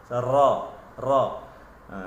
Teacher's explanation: Lidah lengkung, dia ada sifat takrir. Takrir ni getaran berulang-ulang. Ra, ra. Semasa huruf ra, baris atas bunyi ra, bukan ra. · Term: taqrir